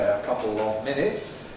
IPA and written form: ə ˈkʌpl̩ ɒv ˈmɪnɪts (a couple of minutes)